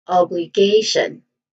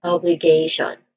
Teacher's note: Now the primary stress here is on the third syllable K. So we say it as obligation.